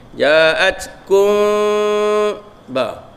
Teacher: mim mati bertemu dengan ba, ikhfa syafawi. Jadi kita sembunyikan mim ke dalam ba. Ja'atkum, kita tak kata kum sebab kita sembunyi.